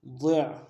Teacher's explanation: ضاد کو موٹا ادا کرتے ہوئے عین کے ساتھ ملانا ہے، عین کو موٹا ادا کریں گے.